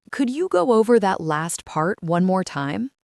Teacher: her tone goes up at the end of the sentence to show it is a polite question